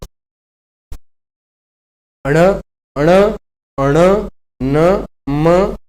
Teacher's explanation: आपके जो नासिका होती है, यानी नाक, नाक से कहीं ना कहीं वायु बाहर निकलती है। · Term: अनुनासिक